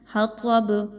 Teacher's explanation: با پر جزم لگائیں گے تو با آلریڈی ہلا کے پڑھی جائے گی قلقلہ کی وجہ سے · طا حروف مستعلیہ میں سے خوب موٹا پڑھا جائے گا